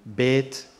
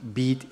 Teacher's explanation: the AY, the diphthong, gets monophthongized in colloquials